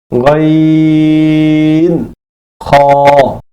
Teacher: 3 number মাখরাজ, হলকের শেষ হইতে উচ্চারিত হয়